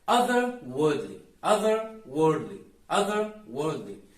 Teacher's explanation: the way native speakers do it is they partially drop the R